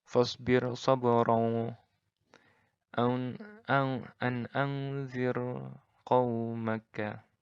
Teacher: Ra-nya di sini, ra sukun di sini dibaca tipis. Tidak ada penebalan.